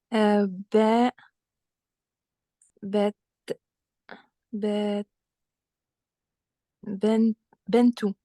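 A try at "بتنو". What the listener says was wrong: Alors, juste la deuxième lettre, c'est un ta, avec un sukkoun, du coup.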